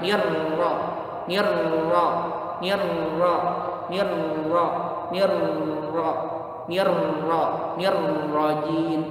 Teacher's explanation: Tetap hanya membuka mulut saja, tapi bunyinya tetap o. Tetap ditebalkan suaranya